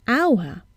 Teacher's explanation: We see an H, but we hear a vowel sound at the beginning, hour, and not hour.